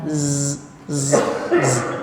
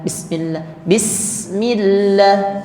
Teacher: bedanya huruf zai tidak hamas, huruf sin hamas. Jadi zai itu bunyi tipisnya karena getarannya itu z, z, z.